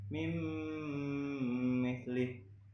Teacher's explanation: ada nun sukun bertemu dengan mim, maka didengungkan.